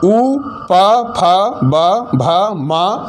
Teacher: उ पा फा बा भा मा और उपधमानीय, इनका उच्चारण स्थान क्या है, ओष्ठ है, होंठ से।